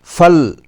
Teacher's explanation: فَلْيُعَدِّ میں لام ساکن ہے، واضح طور پر پڑھیں۔ چونکہ حرف لام حرف کلکلہ نہیں ہے، اس لیے دھیان سے کوشش کریں کہ اس پر کلکلہ نہ ہو، یعنی ہلا کر نہ پڑھنا چاہیے۔ جیسے فل پڑھنا غلط ہوگا، اسے فل بغیر ہلائے پڑھنا صحیح ہے۔